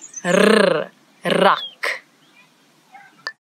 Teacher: it's a rrr, as if your tongue is jumping up and down in your mouth